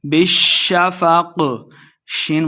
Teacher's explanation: شین مشدد ہے، با کو شین کے ساتھ ملائیں گے، قاف پہ ہم نے وقف کرنا ہے، قاف موٹا بھی پڑھیں گے.